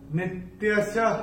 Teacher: दूसरे चरण की समाप्ति पे जो विसर्ग आ रहा है, चरण की समाप्ति पे आ रहा है, तो उसका उच्चारण केवल और केवल ह ही होगा।